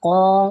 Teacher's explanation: قوف کو پور کر کے پڑھا جاتا ہے، موٹا کر کے، تو آپ نے اس کو پور کر کے ہی پڑھنا ہے۔